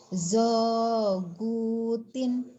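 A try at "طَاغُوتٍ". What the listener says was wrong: Gak ada titiknya.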